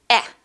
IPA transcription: æ